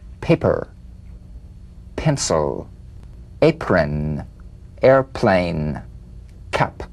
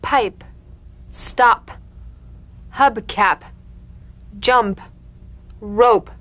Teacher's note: The whispered tap of this drumbeat P is played with a light springing apart of the lips, just like for the B. On the springing away, feel a B in a whisper without any puff of air. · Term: unvoiced labial stop consonant